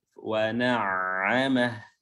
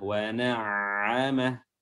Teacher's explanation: huruf ain yang tasdid, wa na'amah, ya diberikan lagi penekanan pada wasatul halq, tenggorokan tengah